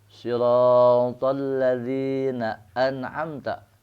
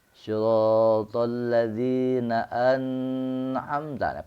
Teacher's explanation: jangan ditahan karena an'amta idhar, jangan ditahan seperti idgham